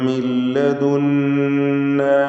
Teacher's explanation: മിൻ എന്നതിലെ സാക്കിനത്തായ നൂനിനെ പൂർണ്ണമായും ശേഷമുള്ള ലാമിലേക്ക് ലയിപ്പിച്ച് മണിക്കാതെ ഉച്ചരിക്കണം. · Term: ഇദ്ഗാം ബിഗൈരി ഗുന്ന കാമിൽ